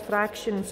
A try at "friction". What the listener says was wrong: You're saying fractions instead of friction. Friction. Friction.